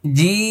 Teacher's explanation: জিম, শেষে দেখেন ঠোঁট বন্ধ হবে, কারণ এটা শেষে মিম আছে। জি, এই যে দাঁত লাগবে না, জি, লক্ষ্য করুন, জিম।